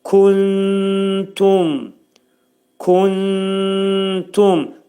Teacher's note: Nun hərfi təyə yetişir və gördüyünüz kimi burada ixva yazılıb. T hərfi ixva olduğuna görə nunun 1/3 hissəsini T hərfinin məxrəcində gizlədirik